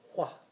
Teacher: So it's like you're doing the W, but there's a lot of air behind it.